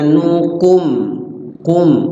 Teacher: um Ayo kemudianumum di situ ada Mim mati ketemu wauzhar syafawi izhar artinya jelas syafawi bibir di bibir maksudnya mimnya jelas dibaca di bibir sempurna huruf mim karena mimnya di situ sukun dibaca sukun ya mim kalau sukun · Jangan ragu-ragu baca mim, jangan ditahan, jangan diumpetin, jelas baca mim di situ, di bibir. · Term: Idhar syafawi, idhar syafawi